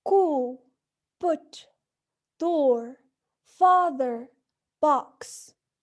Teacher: So, these vowels are produced in a back position. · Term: back vowels